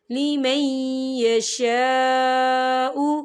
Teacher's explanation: خالی الف سے پہلے زبر ہے اور اس پر مد بھی ہے، تو ہم اسے 4 حرکت کے برابر کھینچے پڑھیں گے۔